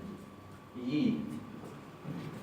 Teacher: Se pronuncia un poco más cerrada que una I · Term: Yod